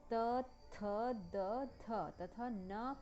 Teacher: त वर्ग के व्यंजन त, थ, द, थ तथा न का उच्चारण करते समय जीभ ऊपर के दांतों से टकराती है